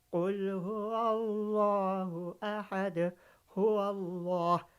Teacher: جلالہ سے پہلے زبر آیا تو ہم تفخیم کر کے پڑھ رہے ہیں، موٹا پڑھ رہے ہیں، ہیوی